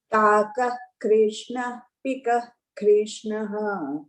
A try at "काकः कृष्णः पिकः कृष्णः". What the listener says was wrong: What happened to the Visarga? But you didn't read like that.